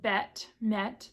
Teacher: So this is eh as in bet, met, that uh forward vowel there